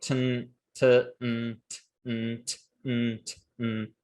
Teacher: Your tongue stays in the same place. The only difference there is actually whether your velum is open or not.